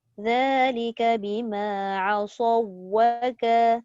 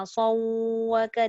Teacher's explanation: Idgham tu maksudnya masuk sahaja pada waw tapi dia tidak dengung. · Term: idgham mutamathilain